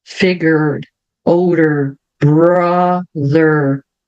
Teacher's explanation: os R são sempre bem Enrolados lembrando Independente se eles estiverem no final no meio ou no